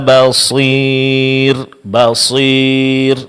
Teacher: Ini adalah kesalahan, karena di sini di samping kita mengucapkan huruf mad ya, itu disertai adanya suara yang keluar dari hidung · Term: gunnah